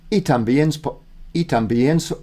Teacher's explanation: When I and E are together, it's like one syllable.